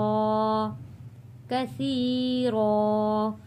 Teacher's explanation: यहाँ पे सा को पढ़ते हुए सीन की आवाज़ नहीं आनी चाहिए, सा, कसी, कसी नहीं होना चाहिए, यहाँ पे खास ख्याल रखना है।